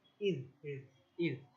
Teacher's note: জালটা পাতলা যা জিহবাটা দাঁতের উপরে আসবে